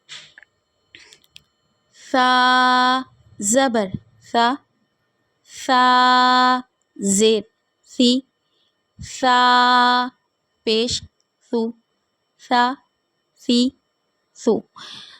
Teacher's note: سا میں ہمیں سیٹی نہیں نکالنی، سا کو باریک پڑھیں گے